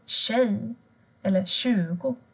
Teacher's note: Men har du t och j tillsammans så blir det sh, sh-ljudet.